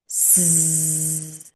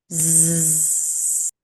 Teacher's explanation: The only difference between S and Z is a voiced sound. So we're going to engage our vocal cords. It will be similar to saying the letter S, but adding a hum.